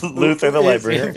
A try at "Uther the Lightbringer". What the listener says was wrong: First of all, is that there is no L in Uther. That's the first thing you got to know about Luther.